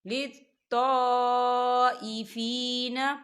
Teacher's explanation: الف مدہ بھی ہو رہا ہے اور اس کے اوپر مد بھی ہے، تو ہم اسے چار حرکت کے برابر کھینچ کے پڑھیں گے